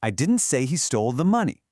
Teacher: pay attention to the falling tone on the word money